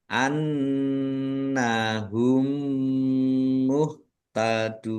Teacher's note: nun Tasdid dibaca hunah atau mendengung. Ditahan biar tampak mendengung.